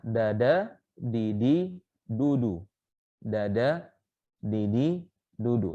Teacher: Ternyata berbeda secara makhrajnya. Ya, kita mengucapkan huruf D yaitu dengan ujung lidah bertemu dengan langit-langit ya.